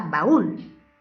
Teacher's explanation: Siguiente, la palabra baúl tiene 2 sílabas. La sílaba tónica está en la última sílaba, por lo tanto es una palabra aguda.